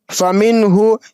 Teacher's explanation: हा पेश हु, फमिन हु, यहाँ पे नून साकिन के बाद हुर्फ़ हल्की में से हा आ रहा है, तो ये इजहार का कायदा बनेगा, इसलिए नून साकिन की आवाज़ को साफ जाहिर करके पढ़ेंगे, इसकी आवाज़ को नाक में नहीं छुपाएंगे